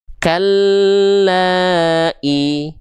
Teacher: Fathah ketemu alif itu dia dibaca dengan kadar panjang dua harakat. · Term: Mad thobi'i